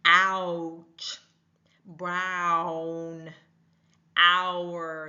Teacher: So we're hearing actually two sounds coming together to make that ow sound.